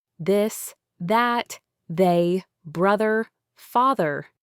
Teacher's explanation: Your tongue tip goes between your front teeth, but this time when you push the air out, you also make your vocal cords vibrate. You should feel a distinct buzzing sensation in your throat if you touch it. · You should feel a distinct buzzing sensation in your throat if you touch it. It's almost like a soft z sound, but with your tongue firmly between your teeth.